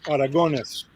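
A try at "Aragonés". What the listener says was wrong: Yeah, I think you're adding a tilde on the. on the end.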